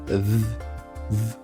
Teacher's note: So here you can say where is the sound VV your vocal cord are vibrating and the airflow is of course coming from your mouth. So it's a sound where you have to expulse air. · The tongue is pulled backwards and also your lower lips are curled slightly v. And the air of course it is escaping slowly between your teeth and your lip v that's how you your mouth should look like for the sound v.